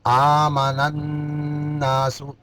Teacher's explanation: نون کو نون میں ادغام مع الغنہ نون مشدد ہے